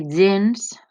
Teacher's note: aquesta G primera és sonora, recorde el truquet de posar-se la mà en la gola i veure si vibra o no, gens, però compte, heu de fer G, no G, perquè aleshores el que vibrarà serà la E, només la primera grafia, G, sonora.